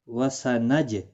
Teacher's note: جیم ساکن پر قلقلہ ہوا